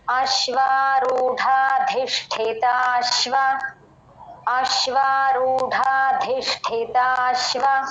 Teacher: ఇక్కడ రూఢలో డ మహాప్రాణం